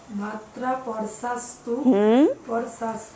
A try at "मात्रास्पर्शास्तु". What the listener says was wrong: इश, स्पर्श, इश। यहाँ जहाँ भी श होगा वहाँ पर जैसे श्री बोलते हैं वैसे इश, स्पर्श। मुझे लगता है किसी को वो स नहीं आता।